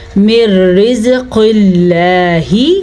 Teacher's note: قاف موٹی پڑھیں گے کیونکہ قاف حروف مستعلیہ میں سے ہے. لفظ اللہ کو ہم باریک پڑھیں گے لفظ اللہ سے پہلے زیر کی وجہ سے.